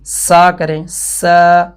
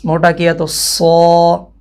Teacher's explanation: اب اتنے سے فرق سے حرف چینج ہو گیا۔ سین کی آواز کو موٹا کیا جائے تو صاد کی آواز بن جاتی ہے